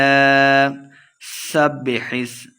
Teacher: سین پہ سٹی کی آواز آئے گی، با مشدد ہے، سین کو با کے ساتھ ملا کے پڑھیں گے۔